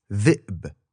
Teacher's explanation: It's a buzzing sound made with your tongue against your upper teeth, and in IPA, it's like a backwards 6 thing with a line through it.